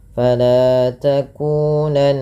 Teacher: Fala madi lanya dua harakat. Takunan nun berharakat tasydid dibaca dengan gunah. Cara membacanya dengan menahan bunyi suaranya. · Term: gunnah